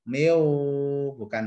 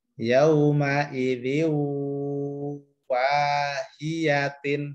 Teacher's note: Miu, langsung ke wawu ya. Miu, bukan min atau ming, tapi miu langsung masuk ke wawu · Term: idgham bi gunnah